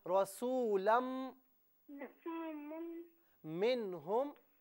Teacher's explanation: یہاں رسولن میں آخر میں لام کے بعد نون کی آواز نہیں نکالنی بلکہ میم کی. دونوں ہونٹوں کو ملائیے، میم ادا کیجئے